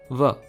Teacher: इसका फॉर्मल नाम है labiodental approximant, यानी कि होंठ दांत से टच तो करने चाहिए बट कोई फोर्स्ड आवाज नहीं निकलनी चाहिए, स्मूथ निकलनी चाहिए।